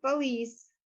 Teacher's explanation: some French borrowings have retained their stress on the last syllable